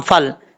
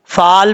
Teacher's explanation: جب فا کو لام سے ملائیں گے تو بیچ میں جو الف ہے اس کو چھوڑ دیں گے۔ اگر بعض اوقات لوگ پڑھتے ہیں سمجھتے ہیں کچھ کے ذہن میں ہوتا ہے کہ الف پڑھا جائے گا، الف کو لمبا کر کے پھر جو ہے لام کے ساتھ کنیکٹ کریں گے، ایسا نہیں ہے۔